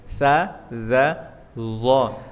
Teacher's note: Sa, za sama za itu ujung lidah ketemu gigi depan